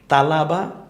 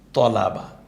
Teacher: মুখটা হালকা একটু গোল হয়ে গেলে ত হয়ে যায়